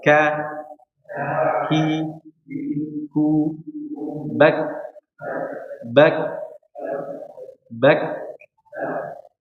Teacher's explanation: tapi memang makhrajnya berada di pangkal lidah. Jadi lidah bagian belakang yang naik ke atas. Tapi hurufnya tipis. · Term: kaf